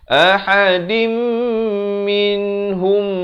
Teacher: daripada din jadi dim, tapi jangan lupa dengungkan dua harakat. Ahadim minhum, di sini kena baca dengan dua harakat. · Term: idgham bi gunnah